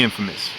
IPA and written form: ˈinfəməs (INFAMOUS)